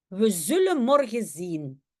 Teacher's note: le N de zullen et le N de morgen sont partis